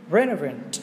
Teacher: trọng âm là sẽ rơi âm đầu tiên